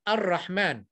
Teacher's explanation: lam dihilangkan terus, diterus masukkan dalam huruf ra